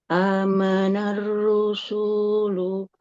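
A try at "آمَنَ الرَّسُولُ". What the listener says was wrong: amanar rasulu ya, bukan rusulu. Kan harokatnya dhammah ya, bukan fathah.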